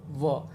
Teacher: व का उच्चारण स्थान होता है दंतोष्ठ, दंत भी और ओष्ठ भी, दंतोष्ठ भी।